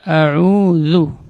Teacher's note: Ujung lidah berada di ujung gigi seri atas. Huruf za termasuk huruf rakhawah, huruf yang mengalir ketika hurufnya diucapkan. Jadi tidak boleh dibaca dengan ketika disebutkan huruf tersebut udaranya keluar.